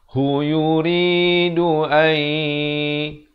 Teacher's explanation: nun mati bertemu ya, idgham bi gunnah masuk beserta dengung